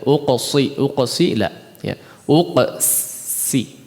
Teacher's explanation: qaf yang bertanda sukun diqalqalahkan, kemudian setelahnya bertemu dengan huruf sin, ya, hati-hati qaf yang memang ditebalkan, ya, kemudian bertemu dengan huruf sin yang harus ditipiskan, jangan sampai menjadi shad, ya, uqsi la, ya, uqsi, ya.